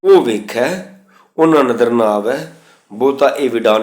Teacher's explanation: ਉਹ ਦੇ ਹਾਹੇ ਦੀ ਔਂਕੜ ਨਹੀਂ ਬੋਲਣੀ ਹੈ, ਇਹ ਦੇ ਹਾ ਦੀ ਔਂਕੜ ਨਹੀਂ ਬੋਲਣੀ ਹੈ।